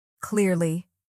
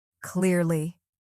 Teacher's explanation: It's a light curl of your tongue, not a full roll.